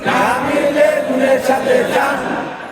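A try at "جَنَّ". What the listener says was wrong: এটার উচ্চারণটা এরকম হবে না এটার উচ্চারণটা হবে আরবি এটা হয় নাকি তাসদিদ তাসদিদ না এটা কি তাসদিদ আরবি যদি দুই হরফের উপরে তাসদিদ থাকে তাহলে ওইখানে গুণনা করতে হয় কি করতে হয় গুণনা হলো নাকের ভিতরে গুনগুন করা এগুলো আমরা পরে পড়াবো দুই হরফ কি কি নুন আর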